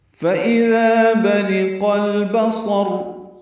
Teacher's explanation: فَإِذَا میں ذال نرمی سے ادا ہوگا، ذا الف مدہ ہے، دو حرکات لمبا ہے